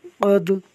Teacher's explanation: دال ساکن ہے، خوب قلقلہ ہوگا